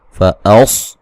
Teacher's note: सौद को मोटा अदा करेंगे और हमज़ा को तहक़ीक़ से पढ़ेंगे